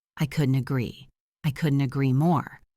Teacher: when we speak fast, the T at the end of couldn't often links to the A in agree